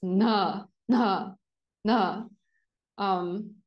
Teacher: It's more like the n pronounced in an aspirate way. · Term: aspirate na